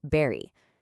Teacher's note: a Bengali speaker might understandably struggle with the V sound, turning very into berry